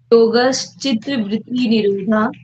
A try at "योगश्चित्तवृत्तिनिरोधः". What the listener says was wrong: योगश्चित्तवृत्ति निरोध। जी, निरोधा नहीं, ध।